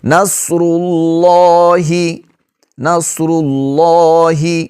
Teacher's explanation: لفظ اللہ کا جو لام ہے یہ بھی یہاں پر موٹا پڑا جائے گا، کیونکہ اگر لفظ اللہ کے لام سے پہلے والے حرف پر زبر ہو یا پیش ہو تو ہم نے لفظ اللہ کا لام جو ہے اس کو پر کر کے پڑھنا ہے، موٹا پڑھنا ہے۔